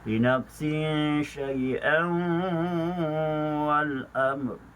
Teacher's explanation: Jika ianya disambung pada kalimah yang berikutnya, Hamzah bertanwin bertemu dengan waw, maka ianya boleh dibaca dengan wajah idgham ma'al ghunnah